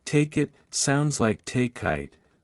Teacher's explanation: the next word starts with a vowel sound the two words connect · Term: consonant to vowel linking